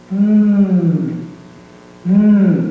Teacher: This is produced by the two lips touching. No air comes from the mouth and it resonates in the nose. There is a tone.